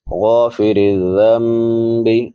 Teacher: ذال نرمی سے ادا ہوگا، 3 حروف جو نرمی سے ادا ہوتے ہیں، ثا ذال ظا، تو اس کو نرمی سے پڑھیں گے.